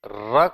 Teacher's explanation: र को बोलते समय जीभ में आप देखेंगे कि अगले पार्ट पर जो टंग की टिप है उस पर वाइब्रेशन होता है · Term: प्रकंपित व्यंजन